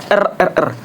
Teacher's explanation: Contoh katanya itu adalah lalu kelas lalu lalu kan lalu nah kelas las last las jual al nah lalu yang ketujuh ada vokal r maaf r getar artikel alola bersuara cara artikulasinya yaitu ee ujung lidah bergetar cepat · Cara artikulasinya yaitu ujung lidah bergetar cepat menyentuh gusi, R. Nah, dia itu cepat ya, tidak seperti yang pengucapan lainnya yaitu dia hanya menyentuh lalu bersuara. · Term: getar apicoalveolar bersuara